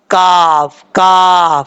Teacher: جو سخت حصہ ہے جہاں پر ہم فنگر لگاتے ہیں تو محسوس ہوتا ہے زبان کے بالکل اوپر ہے، وہاں پر زبان کی جڑ لگے گی تو کاف پڑھا جائے گا